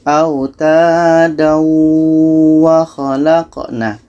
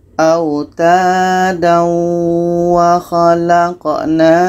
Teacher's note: Karena hukumnya tanwin bertemu waw ini hukumnya idgham bi gunnah. Maka tanwin ini kita masukkan ke huruf waw. Makanya di sini ada huruf tasydid.